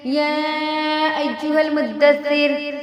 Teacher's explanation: مدثر میں را جو ہے باریک ہوگی، کیونکہ اس سے پہلے کیونکہ جب پڑھیں گے تو ٹھہران کی وجہ سے را جو ہے ساکن ہو جائے گی، اور رائے ساکنہ کا قاعدہ یہ ہے کہ اگر اس سے پہلے زبر یا پیش ہے تو را پر ہوگی، لیکن اگر زیر ہے تو را باریک ہوگی۔